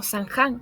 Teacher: San Juan pronunciarse como Sanján, como nasalización en las vocales